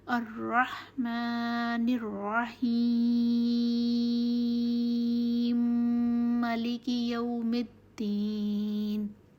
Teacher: میم مشدد ہو جاتا ہے، 2 میم اکٹھے آ جاتے ہیں، میم مشدد بن گیا، اور اس لیے اس سے پہلے مد لازم یعنی 3 الف جتنا طول دیں گے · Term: ادغام